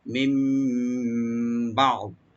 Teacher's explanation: নুন সাকিনটা মিম সাথে চেঞ্জ হয়ে পড়া হবে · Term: একলাভ